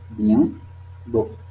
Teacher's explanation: ce sont occlusives, bilabiales, sonores, les cordes vocales vibrent, orales